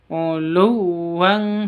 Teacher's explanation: Tanwin bertemu dengan kaf, ikhfa hakiki, samar disertai dengung.